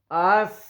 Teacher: اس ہاں بیٹا، اس اس سیٹی کی طرح، ٹھیک ہے. اس اس میں ہمارے دانت بھی ملیں گے اور آواز سیٹی کی طرح آئے گی